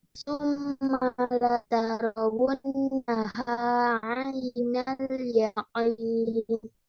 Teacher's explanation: untuk didengung untuk huruf nun dan mim bertasydid ya, dengungnya ditahan 2 harokat ya